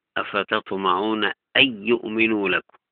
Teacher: خلف عن حمزة له ترك الغنة